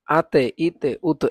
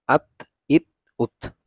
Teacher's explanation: এগুলোকে আবার আতে ইতে উত এভাবে পড়া যাবে না, এগুলোকে আমরা পড়বো আত ইত উত, মানে কলকলা করবো না এগুলোর মধ্যে।